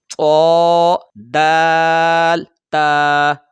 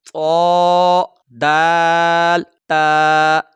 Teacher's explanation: جڑ جو بنیادی جگہ ہوتی ہے جہاں سے دانت نکلتے ہیں، اس جڑ سے جب زبان کی نوک لگتی ہے تو وہاں سے یہ 3 حروف ادا ہوتے ہیں